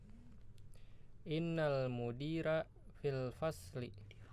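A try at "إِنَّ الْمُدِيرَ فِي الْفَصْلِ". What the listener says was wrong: Ro ya. Kalau bahasa Arabnya kan apa? Dulu kita belajar ikra apa? Roriru kan, bukan rariru ya, ro. Jadi fathah memang, tapi untuk huruf ini bacanya ro ya, bukan bacanya ra. Ro.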